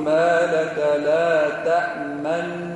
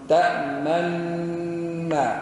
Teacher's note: يدغموا النون الثانية الأولى في الثانية، يقول ما لك لا تأمن، وإشارة بالشفتين إلى النون المدغمة